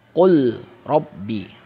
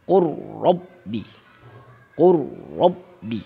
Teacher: Seharusnya lamnya masuk ke dalam ro. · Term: idgham mutaqribain